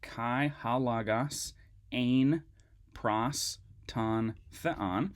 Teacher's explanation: make those omicrons into ah sounds rather than o sounds